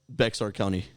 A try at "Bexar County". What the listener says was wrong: It's Bear. Yeah, it's Bear. The X is silent. I'm pretty sure it's Bear.